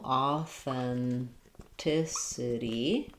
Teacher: for authenticity, we stress on the T syllable. So third to last syllable